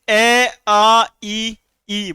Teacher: अ आ ई ई बोला अपने होठ गोल नहीं हुए